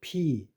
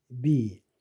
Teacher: P 성대가 안 울리죠. P하고 똑같은 상태에서 똑같은 자리에서 성대를 울리면 B 이거 유성음이죠.